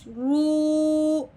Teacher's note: واؤ ساکن ہے، واؤ ساکن سے پہلے حرف پہ جب بھی پیش آ جائے، واؤ ساکن اس سے پہلے حرف پہ پیش آ جائے تو اسے ایک الف کے برابر لمبا کرتے ہیں۔ اب ہم نے رو کو ایک الف کے برابر لمبا کرنا ہے واؤ کے ساتھ ملاتے ہوئے، تو موٹا بھی کرنا ہے، لمبا بھی کرنا ہے، اس کے ساتھ ملانا بھی ہے۔